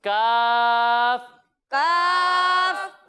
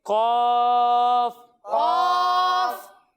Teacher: ایک حرف ہے کاف اور دوسرا حرف ہے قاف۔ جب ہم کاف کی ادائیگی کریں گے تو اسے ہم باریک پڑھیں گے، لیکن جب ہم قاف کی ادائیگی کریں گے تو یہ حروف مستعلیہ میں سے ہے تو اسے ہم موٹا کر کر پڑھیں گے